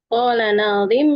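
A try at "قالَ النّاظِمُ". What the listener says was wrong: Nunnya panjang. Qalan nazim.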